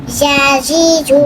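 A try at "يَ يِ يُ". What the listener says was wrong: জিয়া জি। এখানে জিমের উচ্চারণ কেন আসতেছে ইয়া ই ইউ ইয়া ই ইউ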